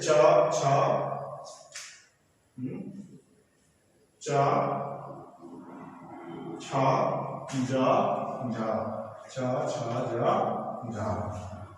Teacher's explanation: अब इन दोनों को मिलाते हैं कि पहले तो उच्चारण स्थान को छूते हैं और फिर दोबारा उनके निकट पहुंच करके हवा को रगड़ खाकर निकलना पड़ता है · तो इसीलिए इसे स्पर्श संघर्षी व्यंजन कहा जाता है क्योंकि इसमें स्पर्श और संघर्षी दोनों व्यंजनों का गुण पाया जाता है। जैसे च छ च छ ज झ छ छ ज झ ये स्पर्श संघर्षी व्यंजन कहे जाते हैं।